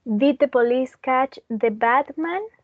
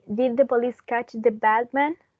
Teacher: when we have a D that is followed by a M, it changes into B